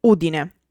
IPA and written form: ˈudine (Udine)